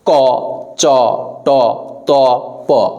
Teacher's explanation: এইগুলো আপনি যদি মুখের সামনে একটা হাত রাখেন। আপনি এইগুলো উচ্চারণ করেন। দেখেন আপনার মুখ থেকে বাতাস কম বের হবে। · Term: অল্প প্রাণ